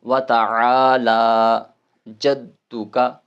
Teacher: عین جو ہے نا یہ حلق کے درمیان والے حصے سے ادا ہوتا ہے، جہاں سے ح ادا ہوتا ہے وہیں سے عین بھی ادا ہوتا ہے